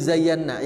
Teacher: Ingat, iya-nya hanya satu ketukan. Zayyan, nun yang lama ditandai dengan ada warna di situ.